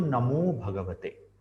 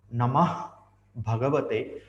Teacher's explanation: the Visarga in Namah is a hard consonant, and the next word Bhagavate begins with Bha, which is soft consonant.